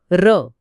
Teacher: आता या रिकाम्या श्वासानंतर लगेच तुम्हाला र मधला र उच्चारायचा आहे र हा कसा ध्वनी आहे तो उच्चारताना जीभ दुमडली जाते आणि त्यात कंपन असतं · हो, जीभ वर टाळूला लागून थरथरते.